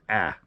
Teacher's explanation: i tend to slightly alter the alpha so it's pronounced a little bit more nasal a little bit more like ah here we go and so